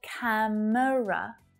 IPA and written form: 'kæm(ə) rə (camera)